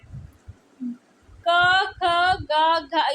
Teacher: ये क वर्ग की ध्वनियां है। इन्हें कंठ व्यंजन कहा जाता है।